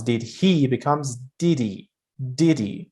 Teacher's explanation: You drop the H and you connect it with the word after.